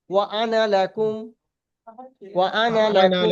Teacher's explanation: কিন্তু এই নুন আলিফটা টান হবে না, এই আনা টান হবে না, আনা কোনো সময় টান হবে না।